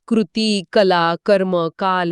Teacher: क चा उच्चार करताना कंठात हवेचा एक छोटा स्फोट होतो कमीत कमी हवेचा वापर होतो